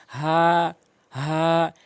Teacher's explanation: এবং উচ্চারণটি অবশ্যই খেয়াল করবেন হা এক আলিফটা টেনে পড়বেন এবং এটি হলকের মাঝ হলকের শুরু থেকে উচ্চারণ করবেন